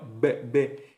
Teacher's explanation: la B es bilabial, oclusiva sonora, que se pronuncia ahí entre los labios